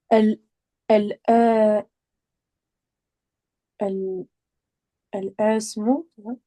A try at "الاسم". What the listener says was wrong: Donc ici il y a un hamzatu al-wasl. Ici on dit pas al-ism, on dit alis. Comme si c'était un lemme. Donc tu dis alismu.